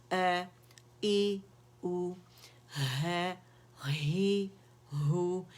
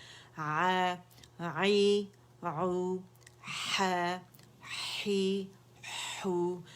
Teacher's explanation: ये अक्सुल अक्सा अल हल्क या अक्सुल हल्क जो है वहाँ से ये अदा हो रहा है फार थ्रोट से, तो ये हमज़ा की आवाज़ वहाँ से आएगी, ना कि अलजौब से ए ऊ ई की आवाज़, वो नहीं आवाज़ आएगी, ठीक है।